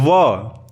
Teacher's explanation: दांत व होठ से आ रहा है तो दंतोष्ठ हो जाएगा